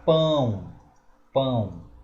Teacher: A palavra pão tem duas vogais na mesma sílaba e nós temos uma vogal e uma semivogal.